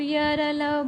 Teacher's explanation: आप य र ल बोलेंगे तो उसमें जीभ कहीं भी पूर्ण रूप से स्पर्श नहीं करती है और हवा अपना बिना रुके बाहर निकल आती है। तो उसको हम अर्ध स्वर कहते हैं।